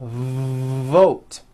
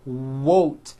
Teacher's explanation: you may be replacing your V sounds for w sounds be careful not to do this the word is not WOTE